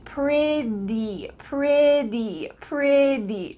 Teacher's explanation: the word pretty, even though it has Ts, it's going to sound like a D sound.